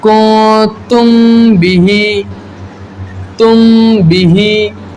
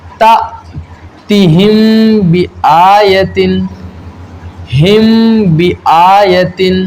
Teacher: اخفاء شفوی ہوگا۔ میم ساکن میں ہم اخفاء شفوی کریں گے، یعنی غنہ کر کے پڑھیں گے۔